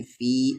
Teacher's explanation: مد کے سمبل کے بعد حمزہ ہے 3 سے 4 الف کے برابر کھینچیں گے